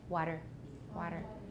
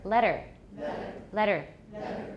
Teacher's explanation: if you're learning an American accent, it's useful to try and train yourself to use the tap, because that's the way we say it.